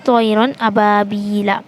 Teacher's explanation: نون کو ظاہر کر کے بغیر غنہ کے جلد پڑھیں گے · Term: اظہار